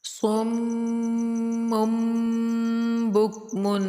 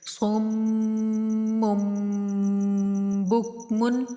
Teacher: میم مشدد کا اور آگے چھوٹی میم کے بعد با آنے کی وجہ سے بھی غنہ ہوگا، ٹھیک ہے، 2 کریں گے۔